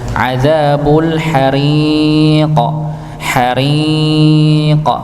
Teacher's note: Adzabul hariq, hariq, ya, maka dipanjangkan haririnya, dibaca tipis karena dia kasroh ra-nya, ya, huruf ra-nya tipis. Adzabu jahannama, ya, adzabu jahannama walahum adzabul hariq.